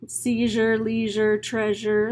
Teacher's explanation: Seizure, leisure, treasure, those are some of the few words that have a zh sound. Your voiced, palatal, alveolar, fricative.